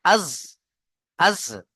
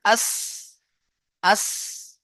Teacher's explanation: মাঝখানে এই যে দুটো দাঁত মিলছে এসে একসঙ্গে এইভাবে এই দাঁতের আগার সাথে, 4টে দাঁতের আগার সাথে মিলে উচ্চারণ হবে জিভটা। জিভের আগা ও সামনের উপর, উপর এবং নিচের দুই দাঁতের আগার সাথে লেগে উচ্চারণ হবে জা, সিন, সদ · দুই দাঁতের আগার সাথে লেগে উচ্চারণ হবে জ সিন সদ অর্থাৎ এই ধরুন আপনার জীব এটা আপনার জীব।